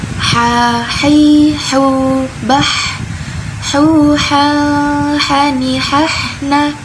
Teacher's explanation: Ini tengah tenggorokan dan ini ujung tenggorokan. Jadi H ini tempatnya ada di tengah tenggorokan dan dia sifatnya hames, mengalir nafasnya.